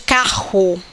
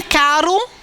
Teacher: Então é glotal. Já em caro, já não é glotal. Então são sons diferentes.